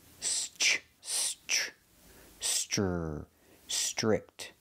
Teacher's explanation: the TR R makes a chch chicken sound